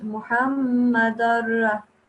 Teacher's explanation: So you go from the Dal to the Ra straight away without making a noon sound.